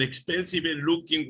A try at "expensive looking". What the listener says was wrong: Okay, expensive. La E no suena de ninguna forma. Expensive looking.